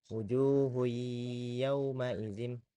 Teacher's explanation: Jadi sama seperti yang sebelumnya, jika nun sukun bertemu dengan tanwin, lalu nun sukun dan tanwin itu bertemu dengan salah satu dari huruf ya, nun, mim, dan wau, maka cara membacanya diidgamkan. Nah, diid diidgamkan ke dalam huruf berikutnya, namun dengan tempo guna dan juga diperpanjang · diidghamkan ke dalam huruf berikutnya, namun dengan tempo gunnah dan juga diperpanjang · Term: idgham bighunah, idgham bi gunnah